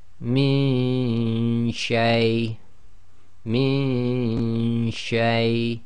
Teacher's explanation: you don't get a clear noon sound because your tongue is not going to the articulation point of noon, and that's why you don't hear it clearly. · So you have to have your tongue ready in the position of the sheen. Okay, and you've got to do the ghunna and effectively the ghunna of the noon in your nose, but you cannot have the tongue in the articulation place of the noon sakin. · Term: hiding the noon sound